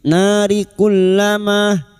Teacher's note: fathah dikuti alif dua harakat mad thabi'i.